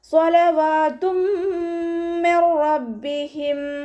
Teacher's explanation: തെൻവീനുള്ള നൂനിനെ മീമിലേക്ക് ലയിപ്പിച്ച് ഒന്നയോടുകൂടി ഓതി കൊടുക്കുക. · നൂൻ സാക്കിനയ്ക്ക് ശേഷം ഇതാ ബിലാഗുന്നയുടെ അക്ഷരമായിട്ടുള്ള റോ വന്നു. നൂൻ സാക്കിനെ നമ്മൾ റോയിലേക്ക് ലയിപ്പിക്കുന്നുണ്ട്, പക്ഷെ മണിക്കാതെ ഓതി കൊടുക്കുക